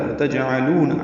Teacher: وَتَجْعَلُونَ واو ہونٹوں کی نا تمام گلائی سے ادا ہوگا، جیم ساکن پہ قلقلہ ہے، وَتَجْعَلُونَ عین وسط حلق سے ادا ہوگا، لو واو مدہ ہے، 2 حرکات لمبا ہے۔